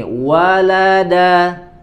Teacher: Huruf lam di sisi lidah yang depan, ya. Sampai ke ujung lidah. Kemudian dal sama itu di ujung lidah juga.